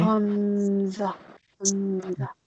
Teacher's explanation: Hamza is pronounced from the bottom of the neck.